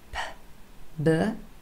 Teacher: formed right here at the front of the mouth with both our lips closed.